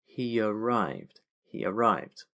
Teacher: we're adding a little y sound that goes in between.